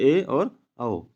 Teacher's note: आधा खोलता है जैसे अ ए आ औ और अर्ध सं जिन स्वरों के उच्चारण में मुख द्वार आधा बंद रहता है